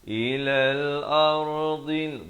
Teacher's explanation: dad ini di tepi lidah makhrajnya. Ardil lati dua harakat. · ilal ra dibaca tebal. Ilal ardil dad ini di tepi lidah makhrajnya.